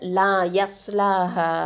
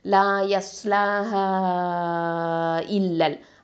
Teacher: நாலு இல்லனா அஞ்சு ஹரக்கத்த நீட்டி ஓதணும் சய அதாவது லயஸ்லாஹ அப்படின்னு சொல்லி ஹனு நீட்டணும் ஓகே நாலு கவுண்டாவது நீட்டணும் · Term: மதல் ஜாய்சல் முன்பசல்